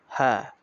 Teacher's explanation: হা হলকের শুরু হইতে সহজভাবে এটা উচ্চারণ হবে